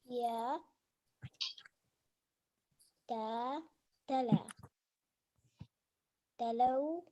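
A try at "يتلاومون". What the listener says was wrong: There's an alif here. Just fathas.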